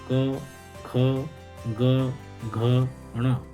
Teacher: इन सब का उच्चारण स्थान कंठ होता है और यह सभी वर्ण कंठ से उच्चारित हो होते हैं इसलिए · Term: कंठ वर्ण